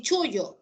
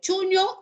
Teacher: La ell es lateral y la ñ es nasal